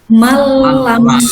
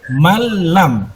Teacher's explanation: Jadi suara nunnya hilang ya, langsung masuk ke dalam huruf lamnya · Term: idgham